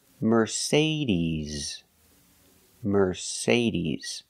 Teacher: the final sound is not s like Star it's Z like zebra Mercedes Merc Mercedes put the stress on the second syllable Mercedes